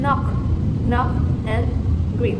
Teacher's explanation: T and D, T and D are alveolar stops, where the air is blocked by the tongue against the alveolar ridge, as in top and draw. K and G, K and G are velar stops, where the airflow is blocked using the back of the tongue against a soft palate